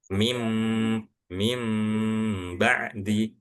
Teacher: dengungnya itu dengan cara kita menahan bibir saling bertemu seperlayaknya kita mengucapkan huruf mim